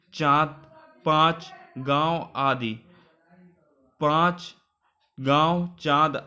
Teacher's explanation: अनुनासिक ध्वनियों का उच्चारण नाक और मुख दोनों से किया जाता है